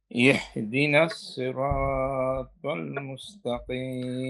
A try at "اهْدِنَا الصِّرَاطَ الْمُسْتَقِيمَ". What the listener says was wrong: ইহ বললে লম্বা হা হয়ে যায়, এখানে গোল হা। ইহ দি, ইহ দি, ইহ দি।